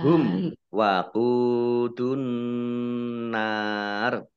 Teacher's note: Mim sukun bertemu dengan huruf wawu, bacaan izhar safawi 2 harokat, dibaca panjang, dibaca jelas. Waqudu qaf dhammah wawu sukun mat tobi'i 2 harokat.